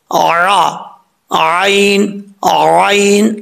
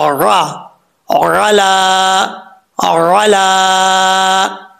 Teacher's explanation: عین کو پڑھتے وقت خاص خیال رکھنا ہے کہ حمزہ کا ساؤنڈ نہ آئے